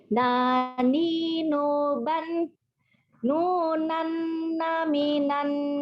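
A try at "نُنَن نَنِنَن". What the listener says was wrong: Nunan naninan. Jangan nunan namiman. Nggak ada. Itu bukan mim. Nun.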